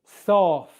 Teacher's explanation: Bottom lip touches top teeth. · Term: F sound